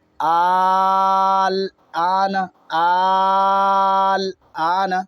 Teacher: یہاں لازم ہے 4 الف مد کرنا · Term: مد لازم